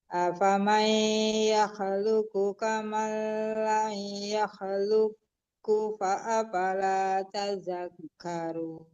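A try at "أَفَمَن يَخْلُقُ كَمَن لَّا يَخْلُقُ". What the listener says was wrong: Boleh berhenti situ dipantulkan qafnya karena qaf itu huruf qalaqalah karena kalau kita berwaqaf. Coba lagi afaman yakhluqu kaman la yakhluq. Itu waqaf qala itu ya lebih bagus berhenti daripada diteruskan, Ibu.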